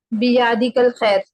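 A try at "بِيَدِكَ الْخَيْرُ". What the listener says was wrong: बी या आपका दो हरकत हो रहा है ना, उसको थोड़ा एक हरकत में करें। बी यदि कल खैर।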